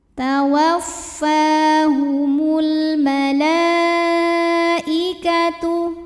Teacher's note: Kemudian ada hukum alif lam qamariyah karena alif lam menghadapi huruf qamariyah yaitu mim. Maka lam sukun kita bunyikan dengan jelas atau dinamakan dengan izhar qamari.